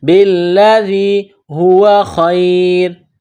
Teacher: لام کے ساتھ ملانا ہے، لام میں سختی کرنی ہے، بالذی، ذال کو یا کے ساتھ ملائیں گے، ذال کو باریک کریں گے ، بالذی ہوا خیر، ہوا خیر، خا کو یا کے ساتھ